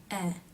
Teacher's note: the tongue remains forward with the tip touching lightly behind the bottom front teeth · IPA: [ɛ]